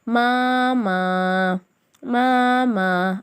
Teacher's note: இரண்டுமே வந்து அலிஃபே மத்தா, இரண்டையும் ஒரு அலிஃப்க்கு நிகராக நீட்டணும்.